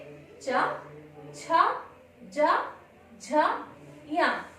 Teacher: जिह्वा तालु का स्पर्श करते हुए वर्णों का उच्चारण करती है